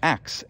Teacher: a lot of people say axe, and that happens because that ks sound, that x sound, well, that's very common in English, but sk isn't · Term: metathesis